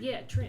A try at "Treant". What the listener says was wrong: Treant. No. not one word. It's not one word. It's two words. Tree.